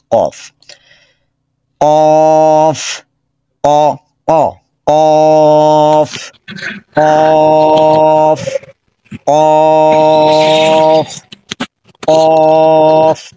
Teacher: এইটা সবচেয়ে বেশি মনে রাখবেন, এই যে এই 6 নম্বরের এইটা উচ্চারণে কফের সময় ধাক্কা লাগবে, অ অ, কারণ এই ধাক্কাটাই কাফ থেকে আলাদা করবে। আচ্ছা, কফের মাখরাজ জিহ্বার গোড়া উপর দিকে চলে যাবে, ধাক্কা হবে, আওয়াজটা মোটা হবে